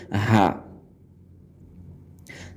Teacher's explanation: আর যেটি বড় হা সেটি গলা মোটা করে বলতে হবে